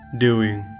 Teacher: The tongue touches the top frontal palate when saying doing.